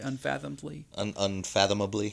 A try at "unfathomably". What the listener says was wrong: Unfathomably. Yeah, there's a couple extra syllables in there. But you were close.